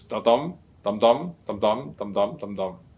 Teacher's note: The pentameter means a meter that consists of 5 feet in each line. And then each foot is made up of an unstressed syllable followed by a stressed syllable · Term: iambic pentameter